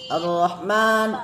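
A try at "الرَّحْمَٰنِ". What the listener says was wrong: Ar-Rahman. Ro-nya jangan arroh. Jadi jangan arroh.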